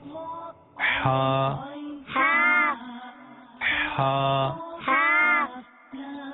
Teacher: ہا حلق کے درمیان والے حصے سے ادا ہوتا ہے